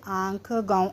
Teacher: अनुनासिक इसे चंद्रबिंदु कहते हैं। इसके उच्चारण में हवा मुख और नाक दोनों से निकलती है।